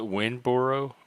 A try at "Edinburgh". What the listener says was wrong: Edinburgh. Edinburgh, not borough. Edinburgh. Edinburgh. Edinburgh.